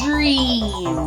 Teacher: your tongue starts with that D and then just goes back to R